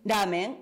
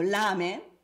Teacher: ramen o lamen suena exactamente igual en el sentido de que no lo diferenciamos, no hay distinción, no es un rasgo distintivo, y esto es muy importante.